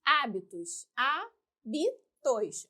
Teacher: Antepenúltima sílaba mais forte, sílaba tônica. Se a antepenúltima leva acento, proparoxítona.